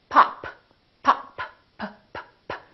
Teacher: This is a stop because I'm stopping the airflow.